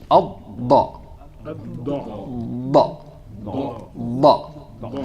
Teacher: ba is one of those letters where you don't hear it until you release